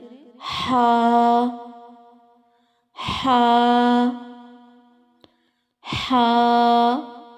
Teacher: ہا حلق کے درمیانی حصے سے ادا ہوتا ہے، اس میں ترشی نہیں پائی جاتی۔ نرمی سے ادا کریں۔